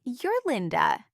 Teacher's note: I'm confirming identity with a question in my music, not my words.